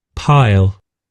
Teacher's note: when I see the IPA transcript, it's pile and piles, but when I listen to the voice, it is a kind of E sound that intrudes these piles.